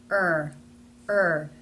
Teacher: For the er sound, the tongue pulls up and back some, and the middle raises and stretches wide, pressing against the insides of the top teeth.